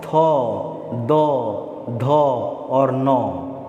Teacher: यह भी स्पर्श से ही हो रहा है, तो इसका उच्चारण हम लोग दंत से, यानी जीभ को हम लोग कहाँ सटाते हैं? दांत में सटाकर ही इसका उच्चारण करते हैं ना जी।